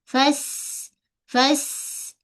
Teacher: Bezakan dengan huruf sa. Kalau sin hujung lidah kita menyentuh pada belakang gigi kecil bawah ataupun antara gigi atas dan bawah